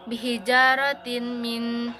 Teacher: Tanwin bertemu huruf mim, cara bacanya itu dibaca masuk ke huruf mim disertai dengan dengung sekitar dua harokat. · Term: idgham biguna